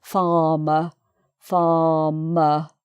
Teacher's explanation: there are two r's in farmer and both of them are silent